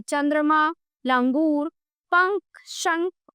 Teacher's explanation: वर्णों के ऊपर लगने वाले बिंदु को अनुस्वार कहते हैं। अनुस्वार वाले वर्णों के उच्चारण में हवा नाक से बाहर निकलती है